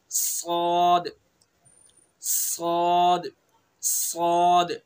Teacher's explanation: सौद, जो जासीन का वही सौद का, बस इसको पुर करके पढ़ेंगे, मुंह भर के।